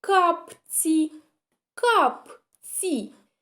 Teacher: значить буква ц у нас буде пом'якшена